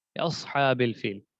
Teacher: اور دوسری بات صاد پر سیٹی بھی ہوگی